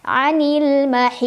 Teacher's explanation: Sisi lidahnya langsung disentuhin sama gigi geraham yang atas boleh kiri boleh kanan boleh kedua-duanya jadi ada suara mengalirnya dan ada suara memanjangnya namanya istitalah sifat khusus dari huruf dad yang tidak dimiliki huruf